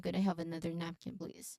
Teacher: you stress on the first syllable nap